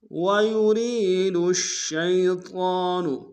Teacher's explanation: دال کو شین کے سامنے لیں گے، شین کے اوپر تشدید زور دیں گے